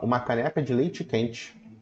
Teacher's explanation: pra gente do Rio de Janeiro o e no final vira i na maioria das palavras